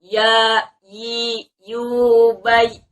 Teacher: ya sukun ini mempunyai sifatul huruf lin, yakni lembut, tidak boleh ada hentakan.